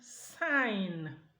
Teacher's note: when this G occurs with the nasal N, G is deleted.